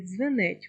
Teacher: Але в слові дзвенить в нас немає звука д, тому що це є звук дз. В слові дзвенить обидві букви належать до кореня, тому позначають один звук.